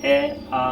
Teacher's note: जिन स्वरों का उच्चारण करते समय ओठ का आकार वृत्ताकार ना हो, मतलब गोल ना हो। जैसे आप जो स्वर बोल रहे हैं, जैसे बोलेंगे ए आ, तो इसमें मुख द्वार गोल नहीं होगा। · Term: अवृतमुखी स्वर